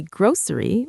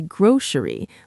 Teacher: You can say grocery with an s sound or as many people in the US do, you can say grocery like it has an sh sound in the middle.